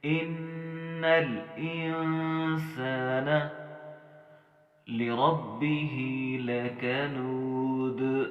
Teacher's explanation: لکنود میں ہم نے دال کے اوپر قلقلہ کرنا ہے